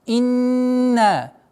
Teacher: Ясное чтение, огласовки кесра, удержание назализации над буквой нун в размере 2 огласовок, а потом долгота в размере 2 огласовок фатхи.